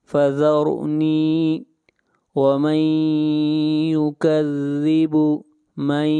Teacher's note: نون ساکن کے بعد حروف یرملون میں سے یا ہے، ادغام مع الغنہ کریں گے